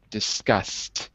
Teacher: Pronounced like a t, but spelled ed.